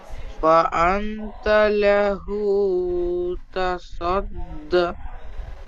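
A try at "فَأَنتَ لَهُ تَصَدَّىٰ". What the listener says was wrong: তাসাদ্দা, দালের উপরে যাবার আছে। তাহলে খাড়া যাওয়ার যদি হয় তাহলে আপনি একালি টান দিয়ে পড়েন, যাবারের মতন পড়ছেন সেজন্য আমি যাবার বললাম। আনতা লাহু তাসাদ্দা।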